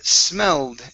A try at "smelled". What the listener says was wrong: Okay, give me a D at the end of the word. You stopped right at the L.